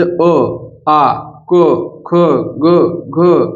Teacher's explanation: इन सब को कहां से बोल रहे हैं कंठ से